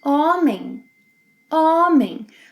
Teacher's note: Unlike English, the letter H is not pronounced in Portuguese. And every time a word ends with M or N, it means that you must nasalize the preceding vowel. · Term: silent H